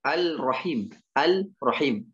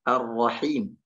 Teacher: Dia mentasydidkan langsung ke huruf Ra tanpa membaca Lamnya. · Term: idgham kamil